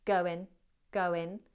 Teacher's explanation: It's an N with the front of the tongue up. Go in. Go in.